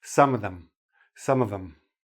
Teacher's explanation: If you want to keep the th, drop the v. If you want to use the v, drop the th.